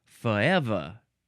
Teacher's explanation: The pronunciation of the southern way to say forever is to get rid of the Rs alto together and say forever.